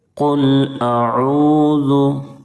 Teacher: قاف کو موٹا پڑھیں گے، پر کر کے پڑھیں گے، کیونکہ قاف حروف مستعلیہ کے 7 حرفوں میں سے ہے، اور لام کی ادائیگی میں آواز بالکل نہ لوٹے، اس کا خیال رکھیں گے۔